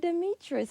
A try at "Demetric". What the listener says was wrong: K sound at the end. Demetric.